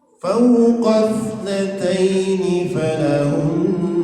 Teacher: Jadi di sini ada huruf atau kata sebelum alif wasal, maka alifnya tidak dibaca, maka langsung terus ke huruf keduanya itu.